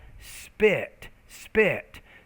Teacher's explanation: when the p comes after a consonant sound it's unaspirated we have spit spit so it doesn't have nearly as much